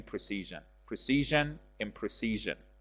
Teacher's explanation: the word precision the stresses on the second syllable